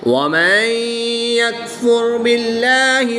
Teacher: نون ساکن کو یا مشدد میں مدغم یعنی شامل کر کے پڑھیں گے۔ اور یہاں پر نون ساکن کے بعد یا حروف یرملون میں سے ہے تو یہاں پر ادغام مع الغنہ ہوگا، غنہ کر کے پڑھیں گے۔